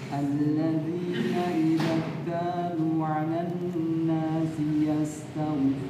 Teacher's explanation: Jadi ada namanya sifat rakhawah dan hams pada huruf sin. Jadi kalau dibaca yastawfun ini sifat rakhawahnya hilang.